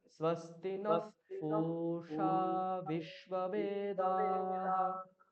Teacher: স্বস্তি ন, স্ব নিচে, স্তি নিচে, নকার উপরে উঠিয়ে দিচ্ছি।